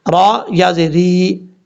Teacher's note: را کے بعد یا ہے، یہ یا مدہ ہے، ایک الف کی مقدار اس کو لمبا کر کے پڑھیں گے، اور را کے نیچے زیر ہے، را بریک پڑھا جائے گا.